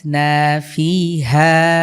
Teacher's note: মিম বা সিসিন বা এখানে হামজার উপরে সুকুন হয়েছে ধাক্কা দিয়ে পড়বো মিম বাসিন এরপরে দেখুন কি আছে আমবাতনাফিহা এখানে নুন সাকিনের পরে বা এসেছে আমরা এটাকে মিম দ্বারা পরিবর্তন করে পড়ব আপনারা খেয়াল করছেন এখানে কিন্তু আমি মিম পড়ছি নুন সাকিনের বদলে মিম উচ্চারণ করতে হবে